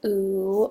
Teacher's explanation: the tongue is high and back in the oral cavity as the vowel quadrilateral showed us and that movement of the